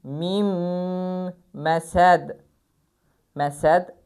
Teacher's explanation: Nun oxunmur. Yazılsa da oxunmur. Məsəd məsəd və mimlər sıxılır. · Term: idğam